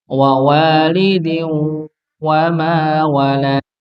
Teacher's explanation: keluarnya nafas dari rongga hidung dan mulut tidak full dari hidung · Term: didengungkan